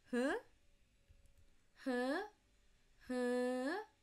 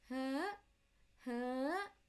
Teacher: Start with the comfortable mid pitch, end with high rapidly. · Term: high pitch